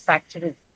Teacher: So the actual way, if you look up the dictionary, it is factory, right? So there's this schwa in between the t and the r sound there. Um, in the American pronunciation, there's a tendency to sort of absorb that schwa while you say it, while you say the word itself.